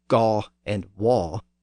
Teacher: But in the South, the vowel had shifted to aw